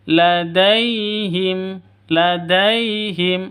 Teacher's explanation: Lembut, halus, tidak boleh disentak. Ladaihim tidak boleh dipanjangkan. · Dai, kualitas lin, lentur dan lembut. Lembut, halus, tidak boleh disentak.